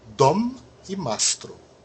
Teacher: os dois M são pronunciados